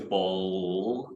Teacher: So for a word like ball, in addition to the contact of the tongue tip to our velar ridge, there's also a velarization. So it's ball, if you can hear the exaggerated O sound. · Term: dark L